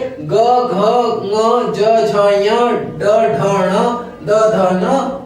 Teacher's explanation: इनमें स्वर तंत्रिका में ज्यादा कंपन होता है इसलिए इन्हें सघोष वर्ण कहते हैं